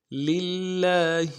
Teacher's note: یہاں پہ لفظ اللہ کو باریک ادا کریں گے کیونکہ اس سے پہلے زیر آ رہا ہے.